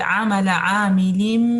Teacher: عین کو لمبا نہیں کرنا، 1 کاؤنٹ ہے